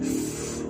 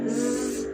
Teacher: For example, s is voiceless and z is voice.